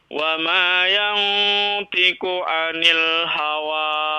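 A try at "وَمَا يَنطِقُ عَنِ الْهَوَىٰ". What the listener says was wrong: Wa ma yantiqu huruf ta dikasih ya.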